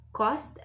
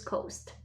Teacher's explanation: so you see that cost is shorter sound than coast